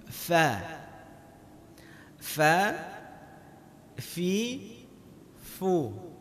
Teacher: perut bibir kita bahagian bawah mengenai gigi seri bahagian atas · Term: huruf fa